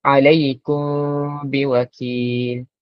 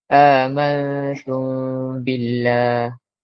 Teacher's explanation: dimasukkan huruf mim di dalam ba dan direnggangkan sedikit mulut untuk membezakan dia di antara ikhfa syafawi dengan idgham syafawi